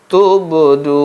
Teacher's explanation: Menurut mazhab Samannudi, ba yang mati condong pada baris depan seperti bacaan ini, tubdun. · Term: qalqalah